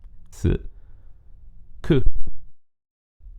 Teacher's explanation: Per trascrivere il suono sk ci serve ovviamente una S. La S si pronuncia in maniera sorda, quindi s, quando si trova all'inizio di una parola. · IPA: [s]